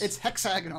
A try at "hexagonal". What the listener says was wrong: Hexagonal. But the wrong syllable.